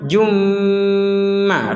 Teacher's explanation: Jadi hukumnya kalau melanjutkan maka dhammatain bertemu dengan huruf mim. Bagaimana? Seperti yang sudah kita bahas sebelum-sebelumnya, dimasukkan dengan dengungan. · Mukhrijum ma, jumma gak ada dengungan. Nah, harus ada dengungan. Jumma, rongga hidung kita berdengung.